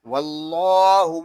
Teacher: اللہ پاک کے لام کو ہم پر پڑھیں گے کیونکہ اللہ پاک کے لام سے پہلی حرف پر زبر آ گیا ہے. اللہ پاک کے لام کو ایک الف تک کھینچ کر بھی پڑھیں گے کہ اللہ پاک کے لام کے اوپر کھڑا زبر ہے.